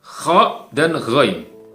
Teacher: Kha dan ghain, ya, tenggorokan atas